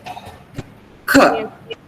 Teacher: Then when you say k, the back of the tongue goes up and touches the soft palate, and it stops the air over there. And then you say k.